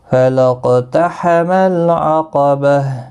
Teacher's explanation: قاف ساکن پر قلقلہ ہوگا، باقی کسی بھی حرکت والے حرف کو کھینچنا نہیں.